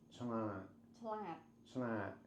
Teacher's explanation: it's like a very nasal upturn at the end